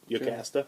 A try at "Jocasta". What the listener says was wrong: Jocasta. I think it's Jocasta. No, I think it's a hard J.